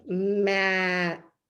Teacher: see how you can hang on to the m for a long time and blend it into the a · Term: continuant sounds